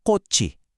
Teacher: yung salitang kot, kapag sinundan yan ng vowel na i, bumabalik yung original ch sound niya. Kaya ang basa na sa kanya ay kotchi. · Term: revival rule